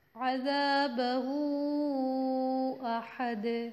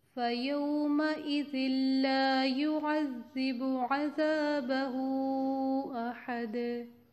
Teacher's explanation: آپ بتائیں، حرف مدہ تھا الٹی پیش، حرف مدہ ہوتی ہے نا الٹی پیش واو مدہ کے برابر ہوتی ہے. ہم یہاں پہ مد منفصل 4 کاؤنٹس دے کے ہم مد پڑھیں گے